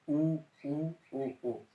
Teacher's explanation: इनमें जीभ पश्च भाग में पहुंचती है, तो इन्हें पश्च स्वर के अंतर्गत रखा गया है।